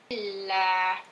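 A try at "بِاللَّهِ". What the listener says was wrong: Lamnya biasa saja, tipiskan. Billah. Billah.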